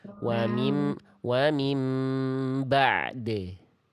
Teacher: Ngalir sedikit ainnya baru de. Dal tinggal dipantulkan saja. Jadi bunyinya wa mim ba'de.